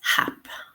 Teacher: the first syllable is stressed and we can hear the H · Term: syllable stress